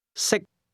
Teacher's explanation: can is spoken with a high level tone, and to eat is pronounced at a low level.